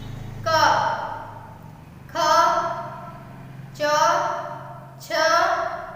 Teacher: अगोस हमारे जो होते हैं उनमें क्या बताया हमने, स्वर तंत्रिका कंपन नहीं होती है।